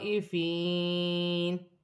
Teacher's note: الف مدہ بھی بن رہی ہے، یہاں الف مدہ بھی ہے، بڑی مد بھی ہے، مد متصل دونوں کو ملا کر 6 الف کی مقدار کھینچ کر پڑھا جائے گا